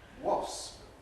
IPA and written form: wɒsp (wasp)